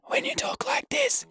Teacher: So when you whisper, when you talk like this, you're squeezing your vocal folds together very tightly and just letting a tiny bit of air out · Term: whispering